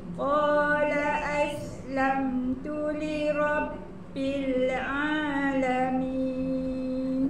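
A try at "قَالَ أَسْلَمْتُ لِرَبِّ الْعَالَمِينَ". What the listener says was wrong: Bunyi ain tu dah macam keluar kut dengung kat hidung ah.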